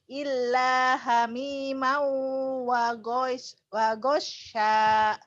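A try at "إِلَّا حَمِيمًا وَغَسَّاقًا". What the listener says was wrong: Wagosako. Sinnya kecil. Wagosako. Illa hamimau wa gosako.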